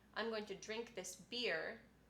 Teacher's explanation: drink might have my secondary stress and beer would have my primary stress